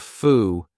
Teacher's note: What happens to that final D? We just cut it off